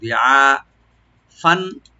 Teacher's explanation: ছিল ওরা বা নাবালেগ ছিল, দিআফান দটাকে একটু রাইট দিব, আর আইনটাকে রাইট দিয়ে একালিফ টানবো, দিআ যেন গলা মাঝখান থেকে আসে , দিআ ফান, ফান উপরে যে তানভিন আছে আমরা জাহার করবো,